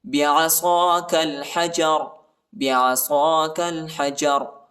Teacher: را کو موٹا پڑھنا ہے